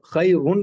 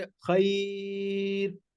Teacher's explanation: रा साकिन से पहले याय साकिना हो तो रा बारीक पड़ी जाती है